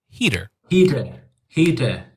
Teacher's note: It's like a midway point between the duh and the t sound.